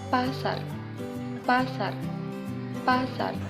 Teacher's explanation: Konsonan apico-alveolar getar er. terjadi bila artikulator aktif yang menyebabkan proses menggetar itu ialah ujung lidah dan artikulator pasif gusi.